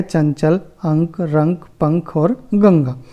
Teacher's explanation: इनका हम उच्चारण केवल नासिका से करते हैं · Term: अनुस्वार